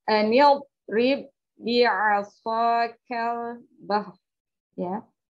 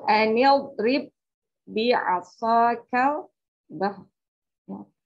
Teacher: ba yang pertama dileburkan atau dimasukkan ke ba yang kedua, lalu ba yang kedua ditasydid. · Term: idgham mutamatsilain